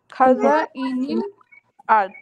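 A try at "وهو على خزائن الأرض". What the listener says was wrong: এই খটাকে ভালো করে বলতে হবে, খা হয়ে যাচ্ছে, আগের মতো হয়ে যাচ্ছে।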